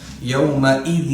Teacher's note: یومئذ میں حمزہ پڑھیں گے، حلق سے نہیں لائیں گے اس کو. یومئذ ٹھیک ہے، یوم آئین میں جائے گا، یومئذ تو آئین میں جائے گا.